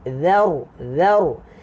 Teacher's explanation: Zal keluar lidah. Ra tebal. Muncungkan mulut sikit.